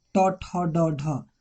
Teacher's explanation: इस टवर्ग का उच्चारण स्थान है मूर्धा